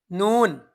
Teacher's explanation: জিহবার আগা তার বরাবর উপরের তালুর সাথে লাগাইয়া নুন উচ্চারণ হয়